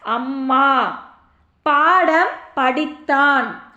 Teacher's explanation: மகர மெய்யெழுத்தானது தனக்குரிய அரை மாத்திரை அளவில் முழுமையாக ஒலிக்கிறது